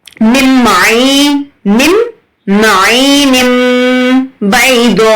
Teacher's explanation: ہمیں تنوین اور نون کی آواز کو بند کرنا ہے، میوٹ کرنا ہے، اور ہمیں میم کی آواز کو نکالنا ہے، میم کو پڑھنا ہے. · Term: اقلاب